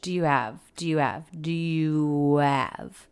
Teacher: it's not uncommon to drop the h in these function words like have had his her · these 3 words, do you have, are said really quickly and a little unclearly. I don't hear the H. Do you have, is what I hear.